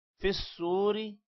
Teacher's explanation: فی الصوری صاد موٹا کریں گے. صاد کے بعد واو ہے تھوڑا سا لمبا کریں گے